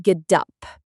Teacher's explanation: In American English, that middle letter t sounds like a very soft d sound. So it sounds like gdup.